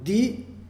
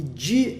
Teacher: Então, Di e Di são duas coisas diferentes. Di é dental, Di é palatal. A mesma coisa, Ti é dental e Ti é palatal.